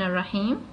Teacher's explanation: This actually means that the ra is a sun letter, and so the lam will become a sun lam. It will be dropped when reading.